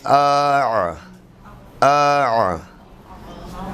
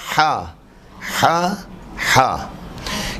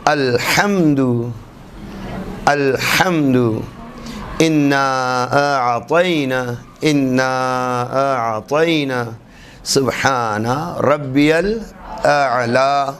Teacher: فرماتے ہیں عین اور ہا، اگر ہم توجہ رکھیں تو جیسا ہم نے کہا کہ آ، یہ عین کی آواز جو نکل رہی ہے اس پر ہم توجہ کریں، یا ہا، ہا کہتے ہیں یہ وسط حلق سے ادا ہونے والے 2 حروف ہیں، درمیانی حلق سے حلق کے درمیانی حصے سے ادا ہونے والے 2 حروف عین اور ہا۔